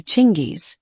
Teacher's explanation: In most English-speaking countries, Genghis is pronounced with a hard G, as in get. However, the Mongolian pronunciation is closer to Chinggis, with a soft G or CH sound